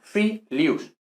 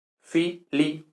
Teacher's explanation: No, filius. Iu no es diptongo en latín. Por tanto, si no es diptongo, es hiato. Son dos sílabas separadas.